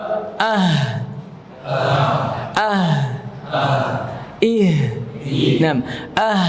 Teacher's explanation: dia punya sifat hams di udara mengalir bahkan kalau antum membaca huruf ha itu sering habis nafasnya